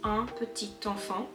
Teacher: The T is usually silent, but because there is a E in enfant, you would have to connect the adjective and the noun orally. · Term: liaison